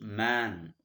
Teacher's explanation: cavity will be blocked man nasal cavity will be open but in between there is a vowel sound it is nasalized so it comes both through both nasal cavity and oral cavity